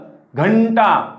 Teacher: अनुस्वार म्हणजे ज्याचा नाकातून खणखणीत उच्चार होतो तो